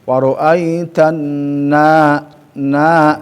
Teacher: di fathah yang harus dibaca panjang pertama adalah na bertemu sama alif